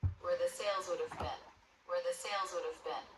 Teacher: bin, spelled with two E's, is actually pronounced with the I as in sit vowel